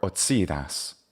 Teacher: Here we have a ts sound, a typical Franco-Germanic sound of the C.